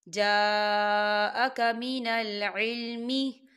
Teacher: یہاں دیکھیں ما جا، یہاں دیکھیں جا خالی الف سے پہلے زبر ہے، اس پہ مد بھی ہے، تو ہم اسے 4 حرکت کے برابر کھینچیں گے